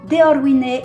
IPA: dɛɔrwinɛ